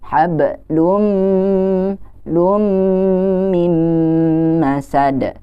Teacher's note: Kita sudah tahu idgham bigunnah itu adalah hukum nun sukun atau tanwin yang cara bacanya adalah dengan memasukkan atau meleburkan dan juga didengungkan, ditahan